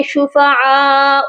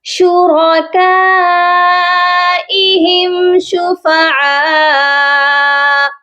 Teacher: صرف حمزہ پیش او حمزہ پڑھا جائے گا اور واؤ اور الف کو ہم نہیں پڑھیں گے